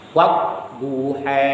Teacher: Himalah itu antara huruf A dan E.